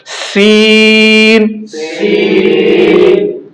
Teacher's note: سین کو ہم موٹا نہیں کریں گے, یہ پتلا پڑا جائے گا, باریک پڑا جائے گا